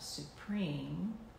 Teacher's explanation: Note the vibration of the M sound that is formed as we close our lips to make that sound. · note what happens with the P sound on preen as we intone this. There's like a puff in the breath. And then the eem.